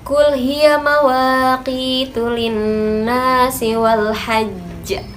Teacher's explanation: terdapat dua huruf qalqalah sekaligus sehingga menimbulkan pantulan yang sangat kuat dan lebih nyata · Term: qalqalah akbar